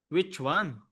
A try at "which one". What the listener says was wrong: Your W's are very nice.